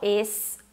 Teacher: o S pode ser o S normal, es ou esse S aspirado, que eu faço, muita gente faz, mas ambas formas estão corretas.